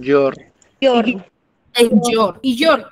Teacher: tu mayor fuerza de voz dónde recae en la última sílaba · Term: acento prosódico